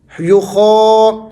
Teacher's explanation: خا جو ہے یہ ان حروف میں سے ہے جس کو ہمیشہ موٹا پڑھا جاتا ہے. یخا، تو آپ نے خا کی آواز کو تھوڑا سا کھینچنا ہے کیونکہ اس کے اوپر کھڑا زبر ہے.